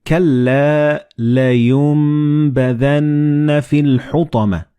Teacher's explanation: the noon and ba, they will be assimilated together and you will pronounce them as meme.